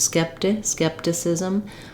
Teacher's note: It can be kind of muted. Then both of our letter I's say the I sounds. They're going to be quick and reduced